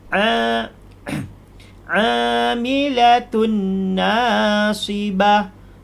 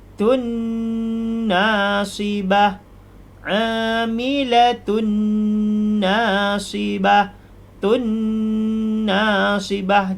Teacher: Jadi ketika kita baca tun, itu ditahan 2 harkat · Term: hunnah